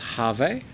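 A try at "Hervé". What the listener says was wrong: Herve, if he's French. Herve. They don't say H. In French, you don't pronounce H.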